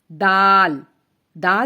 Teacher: زبان کی نوک اوپر کے 2 دانتوں کی جڑ سے لگے تو دال ادا ہوتا ہے